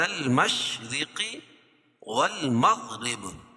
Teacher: قبل المشرق والمغرب را باریک پڑی جائے گی دونوں جگہ. مشرق را کے نیچے زیر ہے.